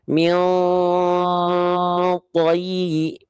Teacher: kalau huruf to memang pangkal lidahnya naik, tapi nggak nempel.